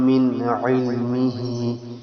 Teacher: من میں نون ساکن ہے، آگے حروف حلقی ہے عین، تو یہاں پر نا اخفا نہیں کریں گے بلکہ اظہار کریں گے، یعنی جو غنہ ہم کر رہے تھے وہ نہیں کریں گے.